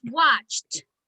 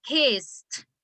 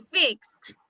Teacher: cuando usted produce estos sonidos, si usted se pone la mano en la garganta, no producen vibración alguna. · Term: sonidos voiceless